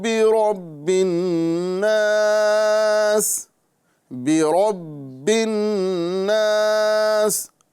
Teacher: نون مشدد ہے، اس کو ایک الف کا گنہ کریں گے · با میں جو قلقلہ ہے یہ مشدد والا قلقلہ ہے، لہذا جماؤں کے ساتھ ادا کریں گے۔